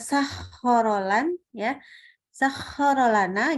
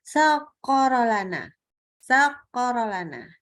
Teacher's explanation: membaca huruf kha-nya dari area yang dangkal atau terlalu depan ya. Ini dia biasanya berubah menjadi huruf kaf.